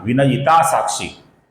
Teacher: इस नाम में वि ह्रस्व है। ये ह्रस्व है। किंतु क्षी दीर्घ है दोस्तों। जहां पर ह्रस्व अक्षर आता है उसका हमें लघु उच्चारण करना होता है।